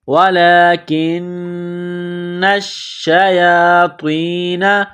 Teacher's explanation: سلیمان ولکن الشیاطین، لام کے اوپر کڑا زبر ہے، ایک الف کے لمٹ میں کھینچنا ہے، کاف کو نون کے ساتھ ملانا ہے، کاف کو باریک کرنا ہے، نون مشدد ہے، غنہ کریں گے، آواز ناک میں چھپائیں گے۔ وَلَكِنَّ الشَّيَاطِينَ، نون کو شین کے ساتھ ملائیں گے، نون کے اوپر تشدید ہے، شین کے اوپر تشدید ہے، تو نون اور شین میں سختی کریں گے، دبائیں گے۔